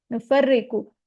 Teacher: ला नुफर्रिकु बैन अहदिम मिन रुसुली, ला 2 count जितना stretch करेंगे, अलिफ मद है। नुफर्रिकु, रॉ पतला होगा, बारीक होगा क्योंकि उसके नीचे जेर आ रही है